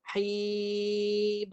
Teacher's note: Jelaskan mim tu. Rapat bibir, naik ke hidung. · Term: sifat gunnah